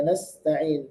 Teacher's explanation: Sinnya harus sukun dibaca jelas. Ada hamasnya.